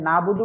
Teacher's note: এই যে নাবুদু বললে আইনটা বাদ পড়ে যাচ্ছে